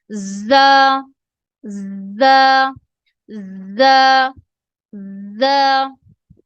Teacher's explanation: زا زا, جب ہم زا پروناؤنس کرتے ہیں تو ہماری جو زبان کی نوک ہے وہ اوپر والے اور نیچے, آپ اوپر والے اور نیچے والے دانتوں کو جوڑ لیں اور اس کے پیچھے جو زبان کی نوک ہے ان کے پیچھے لگتی ہے تو زا ادا ہوتی ہے